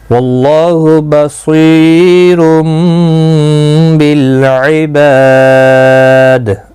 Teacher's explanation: تنوین کے بعد متحرک با آیا ہے، یہاں پر قلب ہوگا، چھوٹا سا میم کتنی آپ دیکھ رہے ہیں، اخفا شفوی ہوگا، بالعباد با الف مدہ ہے، دال ساکن پڑھا جائے گا وقف کی صورت میں، قلقلہ بھی ہوگا۔